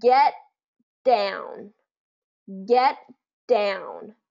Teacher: in linking but get down get down so what happens is our t comes into position but then we don't release the T we release the D · we don't necessarily say get down get down what happens is that t and the D are in the same type of position so we just share the pronunciation